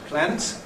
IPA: plænt